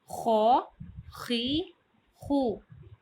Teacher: غین اور خا کی ادائیگی کے وقت گلے میں خراش سی پیدا ہوتی ہے